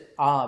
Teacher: A is pronounced with open vowel. It's A, with mouth is fully open.